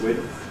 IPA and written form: wɪdθ (width)